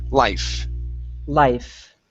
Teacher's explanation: make sure to pronounce that F. It's an unvoiced sound.